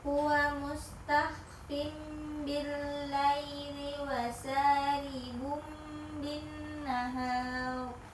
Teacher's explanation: tanwin bertemu dengan ba, Iya, maka cara membacanya, akan dibaca atau diselipkan dengan mim. ya maka cara membacanya itu nun sukun atau tanwinnya diganti dengan huruf mim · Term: Iklap